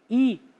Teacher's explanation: quando você pronuncia um I, a língua está lá em cima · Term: vogais altas